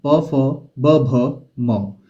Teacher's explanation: फ जब हम बोलते हैं तो इसमें हमारे जो दोनों लिप्स होते हैं दोनों होट होते हैं वो दोनों आपस में मिलते हैं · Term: द्व ओष्ठ